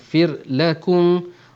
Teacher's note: ra di sini nipis kerana ra di sini mati sebelumnya berbaris bawah, selepasnya bukan huruf tebal, maka ra di sini akan kita nipiskan.